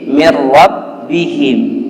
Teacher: jika dia nun sukun bertemu dengan huruf ro, maka nun sukunnya ini atau tanwinnya berubah menjadi ro, dan ini tidak boleh ditahan, cukup dihilangkan saja, ya. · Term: idgham